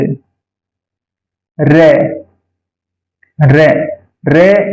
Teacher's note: प्रकंपी यानी रे बोलने पर जीभ में कंपन आता है, इसको प्रकंपी कहेंगे